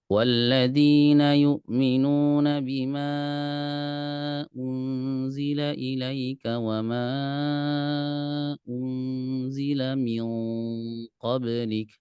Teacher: Nah, jadi unzila ini tipis, min qablik ini tebal ikhfanya.